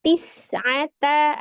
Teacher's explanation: Tis'ata ada sin sukun, as-safir di huruf sin desis ya.